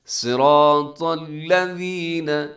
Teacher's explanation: صاد موٹا ہے، را موٹا ہے، طا موٹا ہے